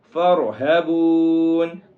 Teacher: وَإِيَّايَ فَارْهَبُونَ، فَارْهَبُونَ، را کو موٹا کریں گے، اور جو ہا ہے یہ سینے والا ہا ہے، یہ حلق والا ہا نہیں ہے بلکہ سینے والا ہا ہے، اس کو سینے سے نکالیں گے